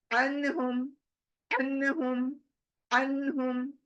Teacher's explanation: आइन की आवाज आपको क्लियर सुनाई देती होगी मेरी कि किस तरह से हलक से निकाल रही हूं मैं